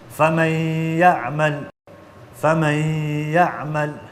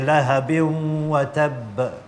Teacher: you don't pronounce the noon. So you merge the noon with the letter that comes after it. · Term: idgham